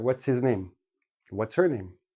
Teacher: H's are quite often dropped because H is a very soft sound it gets lost in the flow of the speech · We keep the TS and make it tss. We drop the H and we put it all together.